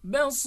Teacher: The letter Ra should be recited with a thin sound if it is sakinah, quiescent, because of the final stop and the preceding letter is ya, sakinah.